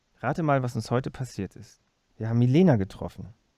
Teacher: the sentences with a steep rising L plus H star accent